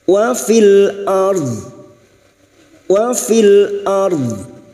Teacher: ra sukun yang didahului fathah kita baca tafkim